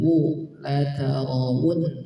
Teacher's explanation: wau maka dibaca Lau dua bibirnya dikumpulkan · di sini waw sering terdengar banyak yang membaca ha, la tarawun, bukan hu tapi apa? Waw, maka dibaca la tarawu, dua bibirnya dikumpulkan wu